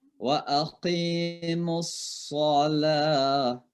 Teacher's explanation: Jadi sin tapi ditebalkan suaranya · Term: sad